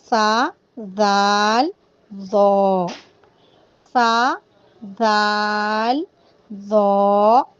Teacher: इनका मखरज है ज़बान की नोक ऊपर वाले सामने के 2 दांतों के किनारों पर लगने से सा, दाल, ज़ो अदा होते हैं। ठीक है, यानी और ये 3 हर्फ ऐसे हैं जिनको हमें नरमी से अदा करना है। · आराम से अदा करें। ज़बान की नोक को दांतों के बाहर निकाल कर अदा करें। ज़बान की नोक को दांतों के बाहर रखें और ज़बान की नोक आपने बाहर निकालना है और ऊपर के दांतों को टच कर कर आपने आराम से पढ़ना है। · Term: हुर्फ़े लसूइया